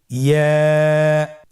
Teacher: ইয়া উচ্চারিত হয় জিহ্বার মধ্যখান তার বরাবর উপরে তালুর সঙ্গে লাগিয়ে উচ্চারিত হয়। আমরা জিহ্বার মধ্যখানটাকে উপরে তালুর সঙ্গে লাগিয়ে উচ্চারণ করি,